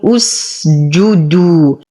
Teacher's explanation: همزة الوصل تسقط في درج الكلمة ولو ابتدأت بها مضمومة لأن ثالث حرف في الفعل وهو الجيم مضموم فنقول اسجدوا.